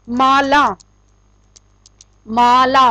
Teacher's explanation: माँ की बजाय ला के ऊपर हम ज्यादा प्रेशर दे रहे हैं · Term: बलाघात